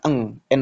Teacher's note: ikhfa abad ini paling jauh makhrajnya dengan huruf nun. Maka bunyinya adalah eng ng ya minkum.